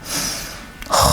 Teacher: Just practice it on its own, just that letter. It just kind of scrapes the top of the throat.